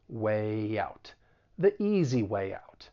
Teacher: So way, even though it's spelled W-A-Y, it's actually a vowel sound, way. It's a front vowel sound, which means we would insert a slight y sound in order to link it with the vowel sound in out. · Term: intrusion